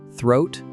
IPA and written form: θroʊt (Throat)